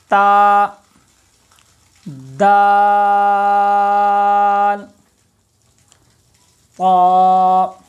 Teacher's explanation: زبان کی نوک اوپر والے 2 دانتوں کی جڑ میں لگے تو یہ حروف ادا ہوتے ہیں۔ دوبارہ سنیں، زبان کی نوک، یہ زبان کی جو نوک ہے اوپر والے 2 دانتوں کی اندر کی طرف جڑ میں لگے تو یہ حروف ادا ہوتے ہیں۔